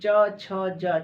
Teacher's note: जो हमारी जीवा है वो कहाँ, जो मुख के ऊपरी हिस्सा है तालु उसमें जाके टकरा रही है।